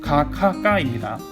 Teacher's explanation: 혀 뒷부분을 목구멍에 갖다 댄 소리예요